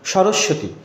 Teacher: তো সরস্বতী উচ্চারণের ক্ষেত্রে স এর নিচে বফলা, এটার জন্য দ্বিত্ব হয়, তো বফলাটা আসলে মাঝখানেই হবে।